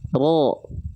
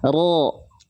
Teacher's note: Huruf berharokat fathah cukup buka mulut. Tebalnya bukan karena menyongin mulut, bukan bertumpu pada syafatain, bukan bertumpu pada mulut kita, tapi cukup diangkat bagian pangkal lidah kita sehingga ketika dilafalkan, lihat, ro, lihat lagi, ro, mulut kita nggak monyong, ro, enggak, ro.